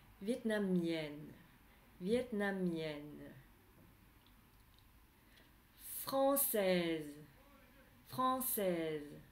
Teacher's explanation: la dernière syllabe, elle est un peu plus longue et elle descend un petit peu plus que les autres.